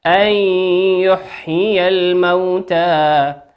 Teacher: نون ساكنة أتى بعدها حرف الياء، والياء من حروف الإدغام بغنة يغن بمقدار حركتين